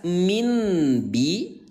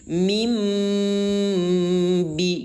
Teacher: Yang tadi kita baca jelas min bi, sekarang kalau dibaca M menjadi mim bi gitu ya. Bunyi N ubah menjadi bunyi M ya. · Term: iqlab